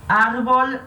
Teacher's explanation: Então, a gente tem que separar as sílabas ar-vol. A sílaba tônica é ar, que é a penúltima.